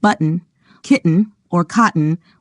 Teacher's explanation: kitten or cotton without inserting awah sound before the final n the N itself should form the nucleus of the last syllable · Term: syllabic N